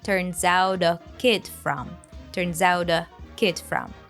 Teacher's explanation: There's also some connected speech in it. We pronounce turns out together, linking the z sound to out · We pronounce turns out together, linking the z sound to out, turns out. Then the T from out becomes a d sound, linking to the article. So we hear turns out a kid from, turns out a kid from.